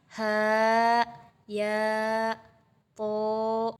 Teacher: Yaitu apabila huruf-huruf ini hadir sebagai pembuka surah. Cara membacanya adalah dieja dengan panjang dua harkat atau satu alif. Setara dengan mad thabi'i.